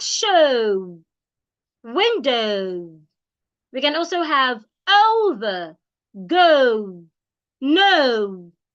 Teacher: it has the uh and the O together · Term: Glide sound